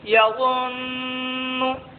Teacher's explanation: نون مشدد میں ایک الف کے برابر غنہ ہوگا۔